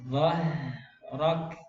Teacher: Dhah jangan dhahrok. Dha tebal, ro-nya tebal. Jadi dhah, ro-nya juga tebal.